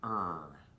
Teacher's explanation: Well, as I had stated before, it's very unique to the American dialect, and it's pronounced very differently than it is in many other languages. It's not trilled like it is in many European languages such as Spanish, Italian, many Slavic languages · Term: American R